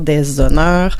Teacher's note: Oui, on le prononce pas. Ben donc c'est un H muet puisqu'on peut faire la liaison